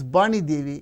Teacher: in Oriya or even Bengali, they don't have the phoneme v. So what do? They replace it with ba. If there is a name like Vani Devi, they pronounce as Bani Devi.